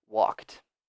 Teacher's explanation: so the final sound is a K if I say a K sound there's no vibration no no movement in my throat